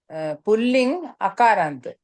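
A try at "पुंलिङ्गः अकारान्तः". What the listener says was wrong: Pullingaha Akarant. Say the Visarga.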